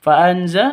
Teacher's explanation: nun mati bertemu dengan zain. Cara bacanya samar didengungkan, siap-siap ke huruf se-nya karena bacaan ikhfa hakiki seperti itu.